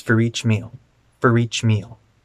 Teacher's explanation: we want to link four each and we want to reduce the vowel in four